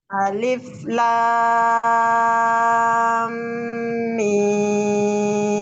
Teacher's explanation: lanya dulu panjangnya alif lam mim baru didengung ya